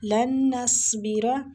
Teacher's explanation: نون مشدد ہے، غنہ لازمی کرنا ہے، سواد پہ حاوے کے ساتھ سواد کو پر پڑھنا ہے، مستعلیہ ہے۔